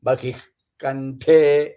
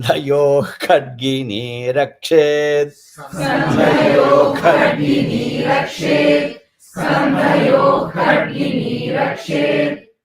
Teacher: Dha is Mahaprana. Aha sound should come. Ka should be Mahaprana.